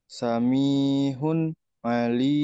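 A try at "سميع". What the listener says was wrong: bukan ha. Ini ain samiun ya.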